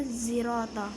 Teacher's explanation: pada ayat ke-7 pada kalimat sirata sod berubah menjadi zai dibaca zirata